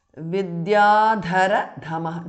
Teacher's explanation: second dha is mahapranah